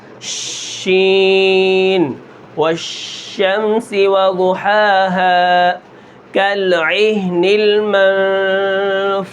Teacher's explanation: شین کی جو آواز ہے اس کے اندر ایک ایسی صفت پائی جاتی ہے کہ منہ کے اندر اس کی آواز پھیل جاتی ہے